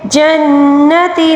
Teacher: یہاں پر نون مشدد کا غنہ بھی ہے، اس کو ایک الف کے برابر کھینچ کر پڑھیں گے